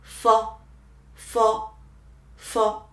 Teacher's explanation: let your upper teeth touch the lower lip, and then you can form a narrow gap and make your airflow squeezed out from the narrow gap. It can create the sound through the friction.